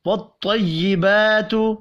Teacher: طا حروف مستعلیہ ہے اس کو بھی پر پڑھیں گے